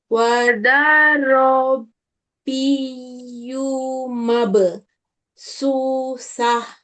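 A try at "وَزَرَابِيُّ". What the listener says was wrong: Masih kepanjangan di za wazaro. Bukan seperti itu, nak. Ya, wazaro.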